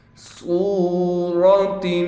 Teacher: صاد کو موٹا بھی پڑھیں گے، صاد کے بعد واو ہونے کی وجہ سے صاد کو 1 الف کی مقدار کھینچیں گے بھی، را کو بھی موٹا پڑھیں گے۔